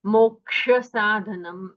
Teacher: जो क्ष है उसका वर्ण विग्रह होता है ककार और मूर्धन्य शकार, तो उन दोनों का हमें श्रवण होना चाहिए जब हम क्ष कहते हैं।